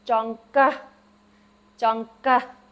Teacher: But jong, ga. It has that H, the air after it.